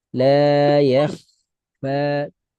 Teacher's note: لا يخفى على Tambah الله tebal kho. Tambah tebal kho karena diawali fathah.